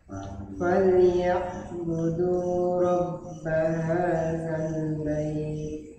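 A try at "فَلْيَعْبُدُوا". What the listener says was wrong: Ya, sering ya yang terjadi juga di sini ketika baca ya, ini huruf ain ikut-ikutan naik ke pangkal hidung. Falya. Padahal tidak ada makhraj di ain itu mempunyai dua makhraj atau dua tempat keluarnya ya.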